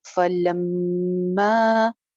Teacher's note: میم شد پہ پہلے غنہ کریں گے، اس کے بعد پھر اس کو ایک الف لمبا کریں گے